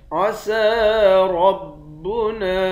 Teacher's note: سین پر کھڑا زبر ہے، ایک الف کے مقدار کھینچیں گے، را کو موٹا پڑھیں گے، نون کے بعد الف ہے، اس الف پر مد ہے، اس مد کو تین الف کے مقدار کھینچ کر پڑھیں گے۔